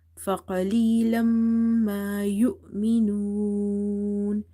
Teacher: Mim is having nasalization. So here is idgham with gunna.